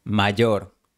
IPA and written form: ma'ʝoɾ (mayor)